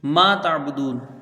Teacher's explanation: میم کو 1 الف کے برابر کھینچ کے پڑھیں گے، الف مدہ ہے